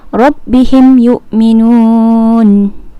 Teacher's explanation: tidak dengung apabila mim mati bertemu dengan huruf ya